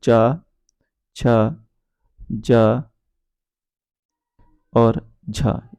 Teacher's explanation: च छ ज और झ यह चार हमारे स्पर्श संघर्षी व्यंजन कहलाते हैं